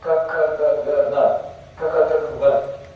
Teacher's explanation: the sound's coming from the obstruction of the back of the throat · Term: gutturals